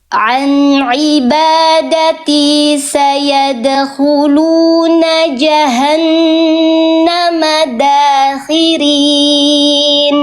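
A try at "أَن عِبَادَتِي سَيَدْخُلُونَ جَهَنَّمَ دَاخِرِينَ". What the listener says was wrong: Bagus, Masya Allah.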